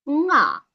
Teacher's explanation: nasal sound changed to high tone